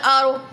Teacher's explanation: را کو پر پڑھیں گے، را سے پہلے حرف پر زبر ہے